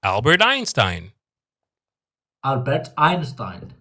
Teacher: Going up with the ein